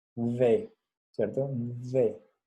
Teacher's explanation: La D es mi lengua sobre los dientes